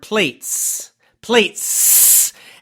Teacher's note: really make that S, that sound very strong and make the sound for a long time. So you're emphasizing it, you're exaggerating it extremely.